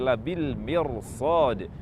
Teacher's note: Karena itu, karena huruf sad merupakan huruf isti'la berharakat bukan kasrah, yakni berharakat fathah, maka huruf ra tersebut dibaca tafkhim.